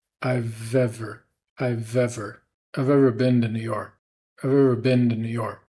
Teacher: And you can hear we're linking the V from I've over to the vowel in the word ever.